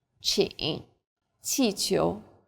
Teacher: Chi is like the CH in cheap, but again with a flatter tongue and a stronger puff of breath